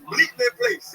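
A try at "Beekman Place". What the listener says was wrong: There's no L in it, first of all.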